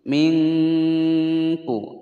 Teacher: nun sukun bertemu dengan huruf Kaf disamarkan dan didengungkan selama dua ketukan ikhfanya ini adalah espak Abdya mingkuh dengungnya terasa di Pangkal lidah